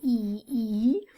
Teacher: I'm focusing on the front part of my tongue, E, E. And it's a tense sound because I'm kind of tensing up these muscles right here in the corners of my mouth.